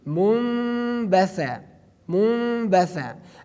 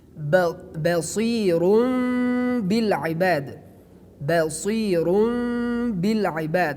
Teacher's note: when we have the letter Ba after Noon, which is Sakin, or after Tanween, we pronounce a Mim, and we remove the Tanween or remove the Sakin Noon. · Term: Iqlab